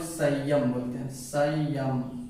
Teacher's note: जैसे कि वो मनुस्वार क्या होता है, उसका जब हम लोग उच्चारण करेंगे तो वो क्या है कुछ म का उच्चारण देगा।